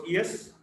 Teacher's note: Y is a voiced palatal approximant.